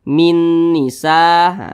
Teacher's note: cara membacanya itu dengan cara memasukkan kemudian disertai dengan denggungan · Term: idgham Bi ghunah